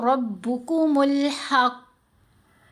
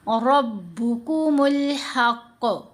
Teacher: कलकला एको आवाज़ का बनना, आवाज़ का बाउंसी होना, आवाज़ का पलट कर आना